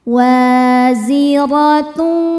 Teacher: Ro dibaca tafkhim karena berharakat fathah. Maka cara bacanya ditebalkan.